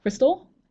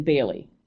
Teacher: Cristal take a slight pause and then Bailey going down so I'm going up with Cristal taking a pause and then going down as if to give a period or an end to that